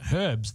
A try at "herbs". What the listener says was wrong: So in this country, we call them herbs. We don't pronounce the H.